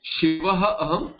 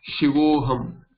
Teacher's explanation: Then what happens to this visarga? This visarga becomes o. It's a longer rule, but then what you see is shivaha aham equal to shivo aham equal to shivoham, and so shivoham, or there is a, the way it is written, you get shivo and aham. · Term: visarga sandhi